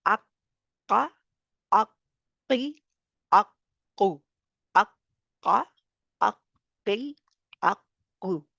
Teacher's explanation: तो इसको यानी कि मोटा ही रहने देना है हर हाल में, ज़बर ज़ेर पेश मोटा, बारीक नहीं होगा।